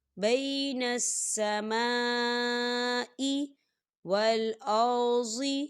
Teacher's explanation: سما خال الف سے پہلے زبر ہے اور اس میں مد بھی ہے، یہ مد متصل ہے، تو ہم اسے 4 حرکت کے برابر کھینچ کے پڑھیں گے